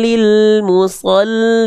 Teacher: artinya memasukkan atau meleburkan bila tanpa ghunah dengung. Ah, berarti memasukkan huruf tanpa dengung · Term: idgam bilagunah